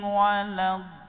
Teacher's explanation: Itu menunjukkan sifat al-istitalah, yakni penempelan dari geraham atas, dari tepi lidah ke geraham atas itu ada jeda sejenak, tidak langsung dia.